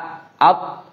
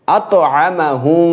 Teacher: আত এভাবে আটকে যাবে না, এখানে কলকলা হবে, আত ধাক্কা দিয়ে হবে